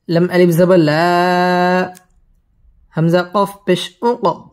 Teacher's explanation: কফ কলকলার হরফ ধাক্কা দিয়ে পড়তে হবে।